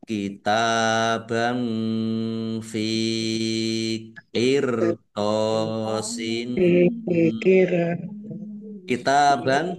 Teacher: kitaban ta fathah berdiri mad thobi'i panjang dua harakat. Fathah tanwin bertemu dengan huruf fa.